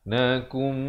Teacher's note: Nakum, di sini idgham bi gunnah, nun mati bertemu mim